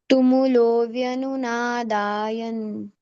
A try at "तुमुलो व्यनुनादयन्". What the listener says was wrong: da is not there da is rasva tumulo vyanunadayan